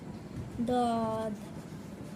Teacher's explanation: জিহ্বার গোড়া কিনারা উপরের মাড়ি এক পাশে তালুর সঙ্গে লাগিয়ে দদ।